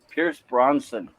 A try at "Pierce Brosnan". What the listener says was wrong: Yeah, Brosnan, not Bronson.